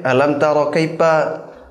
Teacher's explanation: Kalau misalnya di Sunda nanti enggak pakai F tapi pakai P.